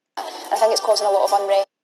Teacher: The f sound in RP is varies to h sound in SSE. In the following example, the word think is pronounced as hink.